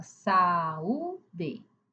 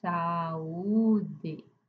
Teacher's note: A boca abre para A, para U, então o som é distinto. Por isso que aqui ele não é ditongo, ele não fala junto, ele fala separado. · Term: hiatos